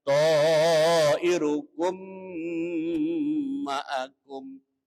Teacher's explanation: Irukum itu ada mim sukun atau mim mati bertemu dengan mim tasdid. Hukumnya namanya idgham mimi atau idgham mislen. Hukumnya dibaca hunna. Hunna artinya mendengung sampai ke hidung.